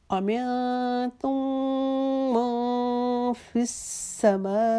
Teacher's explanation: میم اس کے اوپر تشدید ہے، وہاں پر پھر ایک الف کے جتنا غنہ کریں گے، الف کے جتنا رکھیں گے.